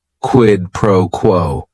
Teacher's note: word is only one syllable and if you're saying it together the stress is kind of on that first word and that last word